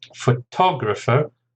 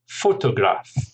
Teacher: the person who takes a photograph is a photographer. So actually the stress moves to the second syllable